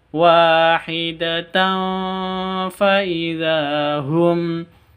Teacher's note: tanwin bertemu dengan fa, ikhfa hakiki samar disertai dengung.